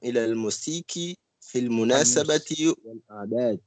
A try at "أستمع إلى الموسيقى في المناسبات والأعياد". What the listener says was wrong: الموسيقى ici c'est comme Aleph, c'est pas Ya. أستمع إلى الموسيقى في المناسبات والأعياد.